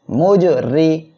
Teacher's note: মুজ, রজের রি, র অক্ষরের নিচে জের হলে র অক্ষরটা চিকুন করিয়া পড়বেন।